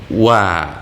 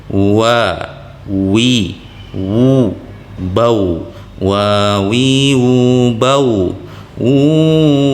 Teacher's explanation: huruf waw itu keluar di bibir atas dan bawah dengan sedikit renggang.